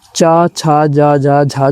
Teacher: स्पर्श संघर्षी जो व्यंजन है वो आपकी चा, छा, जा, जा, झा जो है स्पर्श संघर्षी व्यंजन है